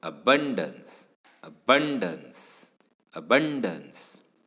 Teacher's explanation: So you will realize that the first syllable is very weakly uttered, whereas bun या पार्टवर जास्त भर दिला जातोय, जास्त जोराने हा शब्द, हा पार्ट, शब्दाचा हा भाग उच्चारला जातोय. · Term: स्ट्रेस्ड ऑन द सेकंड सिलेबल